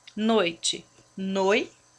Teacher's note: O O e o I não se separam, então ele é um ditongo.